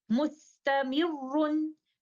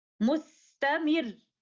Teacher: So in order to show 2 Ra's at the end of our example, we put pressure on the letter Ra, raise our voice slightly upon stopping. So in continuation, we will recite like this, mustamirun. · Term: nabar